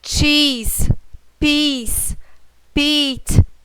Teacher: quando tem o som mais longo, por exemplo, cheese, vamos imaginar que tenha dois Is. Eu pronuncio dois Is